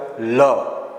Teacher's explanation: ભાગ જે છે અને હવા જીભના બંને પડકેથી આંડ બહાર નીકળે બંને પડકેથી પસાર થાય છે એને દંત્ય પાર્ષિક વ્યંજન કહેવામાં આવે છે · લ તમે બોલો એટલે જીભનો આકાર નળિયા જેવો થાય છે. પેલું દેશી નળિયો આવે ને આ પ્રમાણેનું, આ દેશી નળિયો આવે, આ પ્રમાણેનો દેશી નળિયો આવો આકાર થાય. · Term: દંત્ય પાર્શ્વિક વ્યંજન